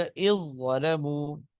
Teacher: ذال بالکل ایسے جیسے ہے ہی نہیں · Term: ادغام